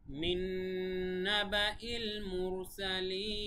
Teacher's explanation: মুরসালিন এখানে মাদ্দা আরজি, কেননা মাদ্দে তবাইর মতো হওয়া সত্ত্বেও শেষে আমরা থেমেছি, এই জন্য মাদ্দা আরজি হয়ে গেছে। এক আলিফ টান না হয়ে তিন আলিফ হবে।